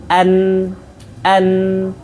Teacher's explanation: Baik mim maupun nun masuk ke hidung ketika permulaan makhraj. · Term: gunnah